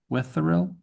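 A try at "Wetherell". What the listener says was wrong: I would give that th sound a nice th sound.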